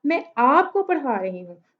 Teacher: तो मैं आप पे स्ट्रेस कर रही हूँ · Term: सेंटेंस स्ट्रेस